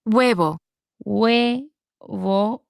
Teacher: wo the the he is silent and the oo is a very soft oo it's almost like it makes the what English people would consider the w sound